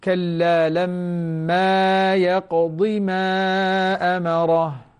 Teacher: انتبه لمد الألف وبدون مد الياء